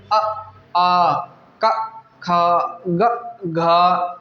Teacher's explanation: यह कंठ से ही निकलते हैं कंठ से ही इनका उच्चारण स्थान है · ये जो वर्ण होते हैं ये कंठ से बोले जाते हैं